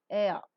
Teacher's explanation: During the articulation of RP air, the glide is from A and moves towards L. So the glide begins from the front unrounded vowel between half closed and half open position and moves towards the central unrounded vowel just above the half closed position. The lips, as you could see, are neutral while the glide is pronounced. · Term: diphthong air